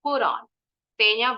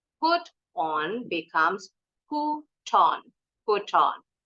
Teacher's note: t-nya boleh bunyi t boleh bunyi D cepat